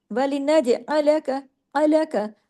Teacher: जीम पे कलकला और तमाम हरूफ बारीक और एक एक हरकत।